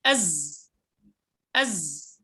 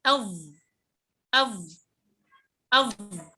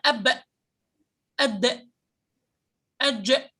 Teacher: كل هذه الحروف مجهورة بمعنى أنها قوية لا يجري النفس معها، فلو وقفت على ال ينتهي الهواء مع انتهاء الصوت، ينتهي النفس مع انتهاء الصوت.